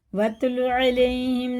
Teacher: یا ساکن سے پہلے زبر ہے تو اسے جلدی پڑھیں گے